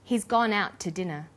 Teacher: when we link out which is stressed and to which is unstressed the final T sound in out is held slightly longer